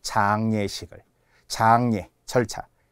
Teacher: 장례식, 이것도 비음화에 의해 니은으로 바뀌긴 하지만 이중모음이 그대로 가죠.